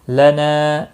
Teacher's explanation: لد دال ساکن پر قلقلہ ہوگا۔ لنا نا الف مدہ ہے، ایک الف کے برابر کھینچ کر پڑھیں گے